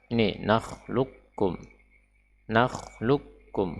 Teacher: Huruf qaf tidak lagi terucapkan sama sekali, ya, tidak terucap sama sekali.